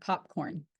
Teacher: made by bringing both lips together to create a complete closure, blocking the airflow from escaping the mouth. Then the closure is suddenly released, resulting in a burst of air.